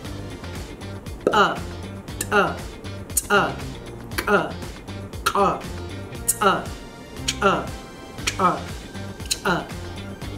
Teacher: We can also eject the sound with using stricture in the throat.